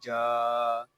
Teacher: اخفا اس وقت ہوگا جب ہم جیم کو پڑھیں گے، جیم الف زبر جا، عین جا، جیم یہ زبان اور تالو کے درمیان والے حصے سے ادا ہوگا۔ جیم کو ہم ایک الف تک کھینچ کر پڑھیں گے کیونکہ یہاں پہ الف مدہ ہو رہا ہے۔